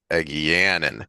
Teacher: it's supposed to be on the second syllable, the second vowel, the anin. So Egeanin.